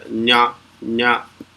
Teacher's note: যেখানটা লাগিয়ে চ বলছো, চ ছ, সেই একই জায়গায় লাগিয়ে দন্ত ন বলার চেষ্টা করলে ওই ওই আওয়াজটা বেরোয়